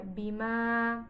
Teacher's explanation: মাদের হরফ, মাদ্দে তবাই, এক আলিফ টেনে পড়তে হয়